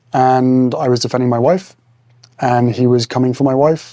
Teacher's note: Rising intonation during this narration makes it sound like he's asking rather than stating